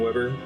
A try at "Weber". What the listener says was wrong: Faber, right? It's not Weber. That's not how you pronounce it. It's German. No, I know that's how it's spelled, but the W in German is a different sound. It's more like Faber. Weber.